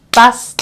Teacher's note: look into the syllabus I will see that bus T so the first syllable ends on S so I will pronounce it as a sharp s